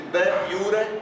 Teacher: eu faço a sílaba forte em iu, mas eu pronuncio o R